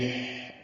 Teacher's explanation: എന്നാൽ إحداهما ഹായ് എന്തല്ല, ഷദീദല്ല എന്നതും പ്രത്യേകം ശ്രദ്ധിക്കുക. റഖാവത്തിന്റെ അക്ഷരമാണ് ഇഹ് എന്ന് ലൂസാക്കി പറഞ്ഞു.